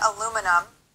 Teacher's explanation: is we are going to have four beats or four syllables it's going to be super short long short short